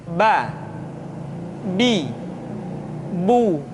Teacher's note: Yang kedua, huruf ba. Huruf ba dikeluarkan dengan cara merapatkan kedua bibir kita